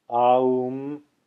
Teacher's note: Some say it should be pronounced as A, U, M, 3 distinct sounds. Aum, the conjunction of three distinct sounds, a plus u plus aum.